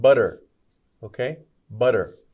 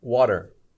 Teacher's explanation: T's together will often be a D sound butter okay butter or even words like water we don't say t we usually say d